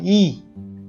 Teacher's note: तालव्य म्हणजे आपण अनेकदा चिंच खाल्लेली असेल तर चिंच चघळतो ती जागा तालव्य म्हणून ओळखली जाते आणि वर्णाचा उच्चार करताना जिभेचं पातं टाळूला लागत असतं.